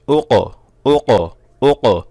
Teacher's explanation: কফে কলকলা করতে হবে, একটা ধাক্কা দিতে হবে, কফ গলার থেকে আনতে হবে। এই অক্ষর যদি আপনি কফ না বলে কাফ বলে ফেলেন তাহলে কিন্তু কলকলাও আদায় হবে না।